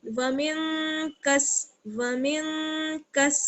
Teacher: واو زبر وا، میم کو نون ساکن سے ملائیں گے، ومن، اور نون ساکن کے آگے جو ہے وہ حروف اخفا میں سے کاف ہے، اس لیے یہاں بھی ہم اخفا کریں گے